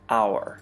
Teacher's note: The H is silent in hour, so the first sound is actually O